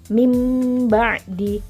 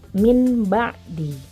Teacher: Nah, kita lihat ada mim kecil di atas huruf nun pada bacaan illa mim ba'di. Nah, itu berarti ada nun sukun bertemu dengan huruf ba. Maka diganti bunyi nun sukunnya menjadi bunyi mim. Mim ba'di, bukan min ba'di. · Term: iqlab